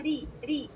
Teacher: رو کی کسرہ کیسی ساؤنڈ ہے, ری ری, رو باری. جب رو کے نیچے کسرہ ہو, رو کیسی پڑھی جاتی ہے, مرقق, یعنی باریک